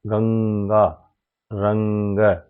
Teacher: पंचम अक्षर का उच्चारण होता है जैसे उदाहरण दिया हुआ है गंगा और रंग दोनों में ही अनुस्वार के बाद ग का प्रयोग हुआ है जो क वर्ग का शब्द है अतः यहां पर अनुस्वार का उच्चारण अंग होगा